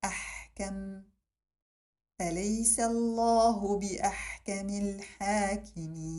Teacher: The ha also exits from the middle of the throat and is characterized by a release of air.